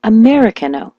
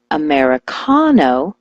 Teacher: When I told her to switch the stress to the ka, like Americano, she was never misunderstood again.